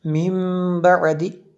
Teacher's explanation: یہاں پہ اقلاب ہوگا، نون ساکن کے بعد با ہے تو اس لیے یہاں پہ اقلاب ہوگا، اس لیے ہم نے غنہ کیا